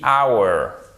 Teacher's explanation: C'est un des rares mots en anglais où on ne prononce pas le H.